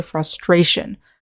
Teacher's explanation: in the noun we say frustration with the syllable stress on the second syllable